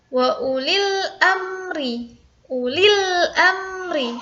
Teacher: Lil amri harus jelas, langsung masuk. Langsung membacanya tuh alif lamnya dibaca jelas dan setelahnya adalah huruf qamariyahnya.